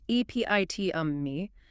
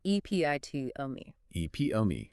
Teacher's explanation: The stress placement on that second syllable, P-I-T, is absolutely crucial here.